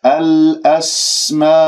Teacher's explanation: اجتمع حرف المد الألف والهمزة في كلمة واحدة في كلمة الأسماء، وهذا المد واجب متصل أربع أو خمس حركات